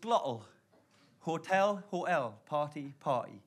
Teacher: drop the T from the middle of a word that's supposed to have a T in the middle.